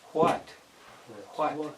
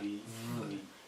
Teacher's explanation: often there's a little breath of air with the W, but not with the V.